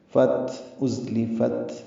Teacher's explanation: فا کو تا سے ملائیں گے، تا ساکن پہ ہمس ہے